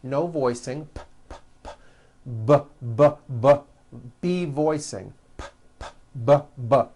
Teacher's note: this time we'll add voicing by vibrating our vocal cords now we won't change a thing with our mouths we'll keep that the same we'll just add voicing